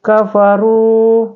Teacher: bertemu dengan wau sukun Huruf ra domah bertemu dengan wau sukun maka cara membacanya itu dengan panjang dua harakat ya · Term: Mad tabi